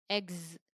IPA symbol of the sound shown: z